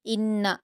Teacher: इन्ना नून मुशद है गुना करेंगे